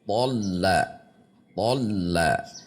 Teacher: tholla tholla tidak dibaca tholla ditahan atau dihentak th dihentak namun di antara keduanya tholla tholla lanya tipis thnya tebal th tegangkan pangkal lidah